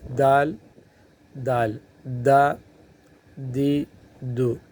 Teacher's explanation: زبان کا جو سرا ہے وہ اوپر کے جو دانت ہے، اوپر کے جو سامنے کے جو دانت ہے، ان دانتوں کی جڑوں میں جو تالو ہے وہاں لگانے سے دال